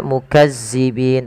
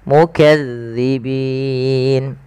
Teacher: Hati-hati teman-teman dalam melafalkan huruf za, huruf zal. Jangan dibaca dengan zai ya. Jangan dibaca mukazzibin, tapi dia mukadzibin.